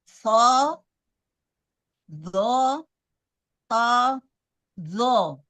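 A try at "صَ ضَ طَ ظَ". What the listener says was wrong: Baik, to sama sodnya belum dapat, Bu. Sod itu dasarnya sin. Lidahnya itu di sini. Datar di sini. Di sini. Di bawah sini.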